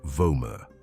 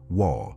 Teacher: Several studies on ancient Hebrew indicate that the Vav had the sound of a W, as in wa, not a V. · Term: the W sound